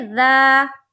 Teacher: सीन लाम दोनों के ऊपर खड़ा जबर है, और खड़ा जबर बराबर होता है अलिफ मद्दा के। खड़ा जबर को एक अलिफ के बराबर खींच कर पढ़ेंगे